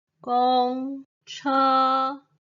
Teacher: this last time the first tone of Zhuyin and Pinyin is a stable and prolonged continuous long tone without ups and downs our voice stays flat